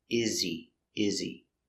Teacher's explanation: because he is not stressed, the H is silent.